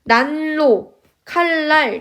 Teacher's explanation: 니은는 리을의 앞이나 뒤에서 리을로 르로 발음한다